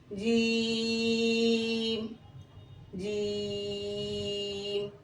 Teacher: क़ाफ, और क़ाफ के मखरज से थोड़ा नीचे, आप देख सकते हैं कि थोड़ा नीचे। काफ, ज़बान की बीच ऊपर तालु की तरफ उठे, लगाना नहीं है। जीम, लगाने की सूरत में ये जीम हो जाएगा, जीम। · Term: हुरूफ शजरिया